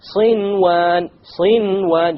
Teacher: Without any ghunna, you make the noon clear and you move on. Why? Because it's in one word. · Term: idhar